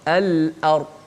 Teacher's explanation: lam hujung lidah, hamzah di mana di pangkal halqum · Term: lam qamariyah